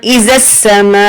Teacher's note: میم الف مد زبر ما، یہاں پر مد متصل ہے، 3 سے 4 حرکت کھینچ کر پڑھیں گے